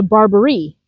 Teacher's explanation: Then there is the Barbari, emphasis on the last syllable